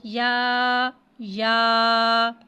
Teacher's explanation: یا کو ایک الف یعنی دو حرکات کے برابر کھینچ کے پڑھیں گے